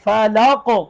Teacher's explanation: قاف پر قلقلہ ہوگا، قاف موٹا ہے ، ساکن ہونے کی حالت میں قلقلہ بھی کریں گے، قطب